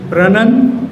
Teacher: ਸ਼ਨ ਤੋਂ ਪਹਿਲਾ ਸਿਲੇਬਲ ਜਿਹੜਾ ਆ ਰਿਹਾ ਉਹਨੂੰ ਜ਼ੋਰ ਨਾਲ ਬੋਲਣਾ ਵਿਦ ਗ੍ਰੇਟਰ ਬ੍ਰੈਥ ਫੋਰਸ। ਇਸ ਨੂੰ ਕਹਿੰਦੇ ਅਸੀਂ ਸਟ੍ਰੈਸ।